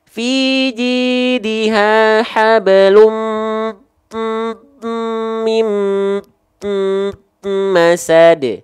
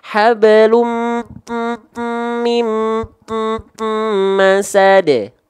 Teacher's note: Kan nun sukunnya ketemu mim, dileburkan. Nah, dia bigunahnya, dengungnya, bigunahnya kamil, sempurna. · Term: Idgham bigunahnya